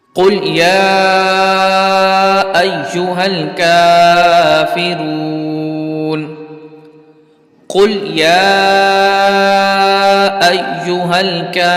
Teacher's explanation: اب اب یہاں پر بہت سے لوگ کل یا یول کافرون پڑھتے ہیں کل، تو یہاں پر قوف کو باریک پڑھ جاتے ہیں، حالانکہ یہاں پر قوف کو پر پڑھنا ہے کیونکہ یہ حروف مستعلیہ میں سے ہے، تو اس کو پر پڑھیں گے قل یا ایوہل، ٹھیک ہے، یا کو کھینچیں گے کیونکہ یہاں پر مد منفصل کا قاعدہ لگ رہا ہے